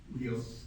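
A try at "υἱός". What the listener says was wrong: Weos. No, short O. Weos. Weos.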